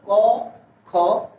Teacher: কণ্ঠ বা জিহ্বা বলি তুমি উচ্চারণ করো ক, খ, দেখবা এই বর্ণগুলো তোমার কণ্ঠ থেকে উচ্চারিত হচ্ছে।